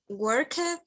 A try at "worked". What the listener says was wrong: Worked. No. There is a difference here. This is work. And this is with a T at the end. Worked.